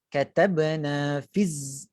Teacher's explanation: Tempat tu fiz, ada bunyi lebah tu. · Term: sofir